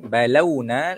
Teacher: lam waw mati di atas lau, bukan lo. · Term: madlin